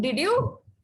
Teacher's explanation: So when to sound surprised, you know, you can use rising tone.